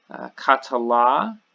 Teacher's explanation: you have the last syllable gets the accent, katala.